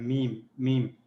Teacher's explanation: میم جو ہے ہونٹوں کے اندرونی خشک حصوں کو آپس میں ملا کر ادا ہوتا ہے